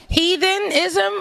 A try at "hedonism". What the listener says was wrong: With a D. It's a D in there. Hedonism.